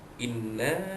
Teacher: nun syaddah wajibul gunnah, dengung dua harakat